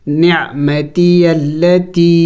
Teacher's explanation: اس لام مشدد کو ہم سختی سے پڑھیں گے اور اس الف کو نہیں پڑھیں گے. نعمتی التی، اس کو بھی ایک الف مقدار سے زیادہ کھینچیں گے اس لیے کہ اس کے اوپر چھوٹا مد ہے.